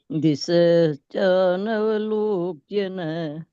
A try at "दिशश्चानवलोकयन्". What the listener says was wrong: लोक ये न नहीं है, ये न है वो आधा है, पूरा न नहीं बोलना है। दिशश्चानवलोकयन्।